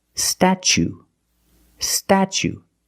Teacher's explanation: When I see words like this with tu plus a vowel, like t u e or t u a as the second or third syllable, the t is pronounced chch like chicken and change ch.